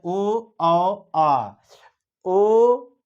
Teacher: कंठ और होंठ से जो उच्चारित हो वो होता है कंठोष्ठ। तो ये है ओ आ, ओ होंठ का प्रयोग है, औ होंठ का प्रयोग है, आ ये कंठ से, आ भी होंठ का भी आ से।